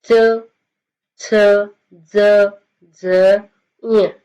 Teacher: और जब हम इनका साउंड करेंगे जैसे देखो च ज झ ञ इनका उच्चारण हम करते हैं तो ये कंठ से थोड़ा सा ऊपर का स्थान है यहां यहां से इसका उच्चारण होता है इसलिए इनको बोला जाता है तालव्य